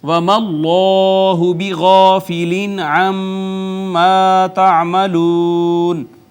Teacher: اس میں جلالت کا ماقبل یہاں پہ مفتوح ہے، اس کو ہم نے پر کر کے پڑھا ، پھر الف المدیہ الصغیرہ ہے، الف مدہ ہے، یہاں نون